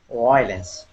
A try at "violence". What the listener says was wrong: You're starting off with a oo sound. Okay, what you want to do is you want to put your top teeth, these right here, on top of your bottom lip. Okay, violence.